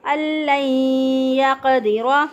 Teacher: پہ قلقلہ کریں گے، ان لن یقدر، دال کو باریک اور را کے اوپر زبر ہے، را کو پر پڑھیں گے